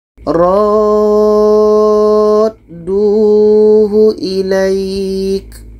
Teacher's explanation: ro ini kita panjangkan 6 harkat baru masuk ke huruf da. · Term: mat lazim kilmi mutsaqqal